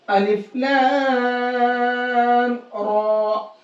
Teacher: یہاں پر لام کو زیادہ کھینچیں گے، را کو زیادہ نہیں کھینچیں گے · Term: مد لازم